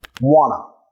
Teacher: vamos a estar reduciendo esas palabras de función a un sonido schwa